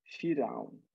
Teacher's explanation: So the ra of Fir'aun is made not emphatic, but small.